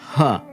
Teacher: uh distinct consonants in sanskrit is the ha the h sound it's classified as a velar it's aspirated